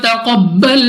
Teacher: قاف مستعلیہ میں سے ہے، اس کو موٹا پڑھیں گے